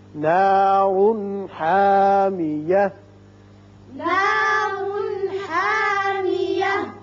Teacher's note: را پر ہوگا اوپر پیش ہے لیکن اس کے ساتھ ساتھ یہاں اظہار ہوگا نون کا چونکہ ہا آ گیا جو حروف حلقیہ میں سے ہے